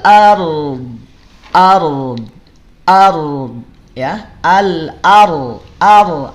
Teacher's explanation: r-nya tebal Kenapa r-nya tebal sebelumnya ada fathah setelahnya ada huruf istilla